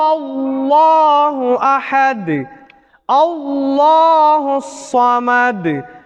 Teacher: அல்லாஹ்வுடைய வார்த்தைக்கு முன்னால் உள்ள எழுத்தில் ஃபத்ஹா அல்லது லம்மா வந்தால் அதனை வல்லினமாக அல்லாஹ்வை வல்லினமாக நாம் உச்சரித்து ஓத வேண்டும்